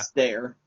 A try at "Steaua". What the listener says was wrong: No, not R. Why are you including the R? No, say Stea.